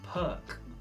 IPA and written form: pɜːk (Perk)